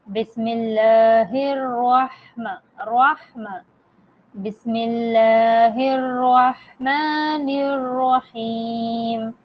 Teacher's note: یہ جو ح ہے یہ حلق کے درمیانی حصے سے ادا ہوتا ہے، اور یہ جو ہ ہے یہ حلق کے سینے کی طرف والے حصے سے ادا ہوتا ہے.